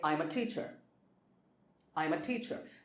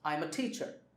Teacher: the focus is on teacher because that is the main information in the sentence. I'm a teacher.